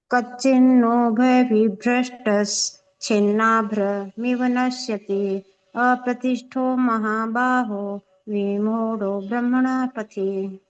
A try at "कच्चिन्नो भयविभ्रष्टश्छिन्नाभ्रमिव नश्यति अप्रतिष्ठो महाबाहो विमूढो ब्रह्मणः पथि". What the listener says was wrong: बहुत अच्छा, आपका उच्चारण अच्छा है।